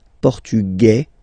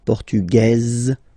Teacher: Masculine, portugais, you don't pronounce the S. Feminine form, portugaise, you pronounce this z sound